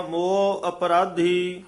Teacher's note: ਮੋਹ ਉਚਾਰਨ ਕਰਨਾ ਮੂਹ ਨਹੀਂ ਕਹਿਣਾ